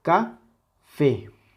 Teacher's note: ¿Cuál es la sílaba tónica? Evidentemente la última. Café es la que suena más fuerte.